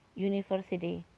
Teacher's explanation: depannya bukan lagi U tapi Y, seperti ini kan, university. Jadi ini tetap a university.